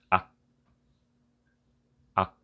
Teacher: You only need to pronounce until the stopping sound of a K.